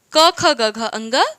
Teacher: कवर्ग का उच्चारण स्थान कंठ